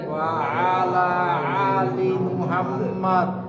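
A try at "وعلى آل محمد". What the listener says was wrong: আলি দুইটাই আইন হয়ে যাচ্ছে। দুইটা একরকম হয়ে যাচ্ছে।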